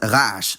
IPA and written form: ˈʁ̞aʡaʃ (noise)